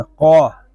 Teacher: قاف یہ حروف مستعلیہ میں سے ہے، اس کو پر یعنی موٹا پڑھیں گے.